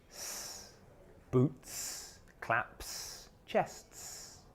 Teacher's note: word finishes with an unvoiced sound, such as boot, clap, or chest, then the s sound is also unvoiced.